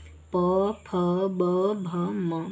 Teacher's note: ये जितने भी हैं ये हमारे बोलते वक्त होठों से टच करके निकलते हैं, इसलिए हम इन्हें होठ वाले में रखे हैं। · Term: ओष्ठ